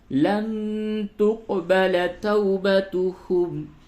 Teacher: نون ساکن کے بعد تا ہے، جگہ پہ اخفا کیجئے